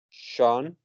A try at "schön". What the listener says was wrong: Not shown. You pronounce show and then slightly E and then N. Schön. Schön.